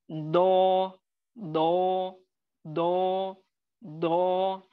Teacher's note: कैसे पढ़ेंगे इसको, दो दो दो दो, आपको यानी आपकी जबान के मोटे किनारों को ऊपर के यानी 5 दाढ़ों के जड़ या रूट, उसके क्या बोलते हैं, मसोड़े से लगाना है